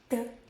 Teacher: No puff at all.